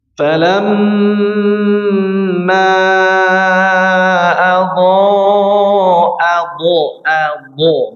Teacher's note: Terus mim tasydidnya dilamakan.